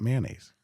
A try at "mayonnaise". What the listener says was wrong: Mayonnaise. You sound like you're saying man-haze.